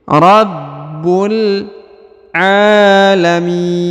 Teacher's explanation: huruf a dipanjangkan dua harakat karena di atasnya terdapat tanda Alif kecil